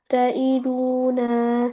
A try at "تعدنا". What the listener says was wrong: ताइदून नहीं, वाव मद्दा पैदा हो जाएगा अगर आपने इसको खींचा।